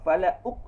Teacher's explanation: Dia tak lepas qalqalah. Sepatutnya qalqalah tu lepas.